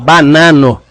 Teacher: quando eu falo banano eu tô tentando evitar a nasalização porque porque esperanto evita-se é os sons nasais Ok por isso